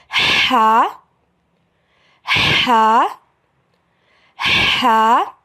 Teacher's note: حلق کے درمیان سے ادا ہوگا